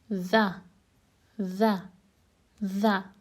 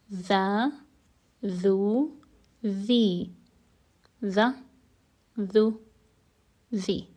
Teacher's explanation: tip of the tongue touches the upper teeth. And there is also some vibration in the vocal cords.